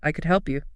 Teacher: It's silent. It's invisible. Never, ever pronounce the L.